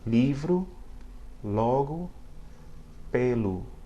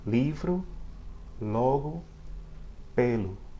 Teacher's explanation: At the beginning of a word, or between vowels where it's going to start a new syllable, it sounds a lot like the L in English.